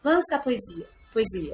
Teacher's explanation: É como se o som ficasse junto, virasse um ditongo. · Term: cinerese